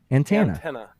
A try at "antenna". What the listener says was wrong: You're saying "an" a little bit more. "An." It sounds like the A's a little bit stronger.